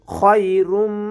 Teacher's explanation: লাইলাতুল কদর খায়রুম, খটা কণ্ঠনালীর শেষ ভাগ হতে উচ্চারণ করতে হবে। খায়রুম, রুম গুণ হবে মিমের উপরে তাশদীদ আসার কারণে